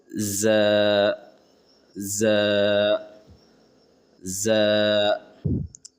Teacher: زبان کی نوک کو سامنے والے دانتوں سے سختی سے لگاتے ہوئے ز ادا ہوتے ہیں